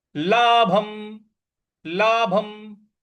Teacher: भ के ऊपर जो अनुस्वार है उसका उच्चारण म के साथ मिलाएंगे